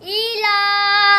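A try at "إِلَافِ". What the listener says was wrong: ई खड़ी जेर को लंबा क्यों नहीं किया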